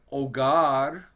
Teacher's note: we're not going to hear the h